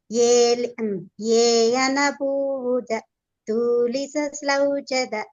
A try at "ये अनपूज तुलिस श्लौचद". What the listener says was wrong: తూకు దీర్ఘం పెడుతున్నారు మాత. దానికి తూ దీర్ఘం పెట్టకూడదు.